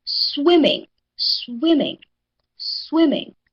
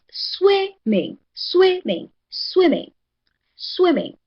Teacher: the first syllable, swimming. So, swimming receives the higher voice.